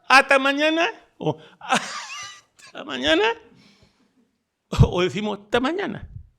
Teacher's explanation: la S en su posición de cero fonético, relajamiento o aspiración laringea